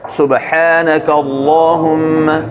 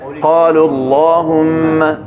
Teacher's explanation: لفظ اللہم سے پہلے زبر پیش ہو تو پر پڑھایا جاتا ہے